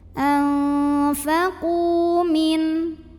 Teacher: karena ada waw sukun didahului baris dhammah, maka qafnya panjangkan 2 harokat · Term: Matobi'i dhahiri